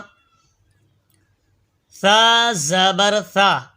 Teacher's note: जबान का सिरा और ऊपर के दांतों के अंदरूनी किनारे से सा अदा होता है